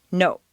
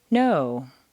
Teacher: in Spanish or Japanese, the word no is, to our ear, clipped or abbreviated.